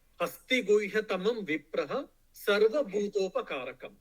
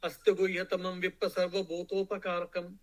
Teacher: if you are chanting continuously, then there will be not Visarga, because that's all Sanskrit rules.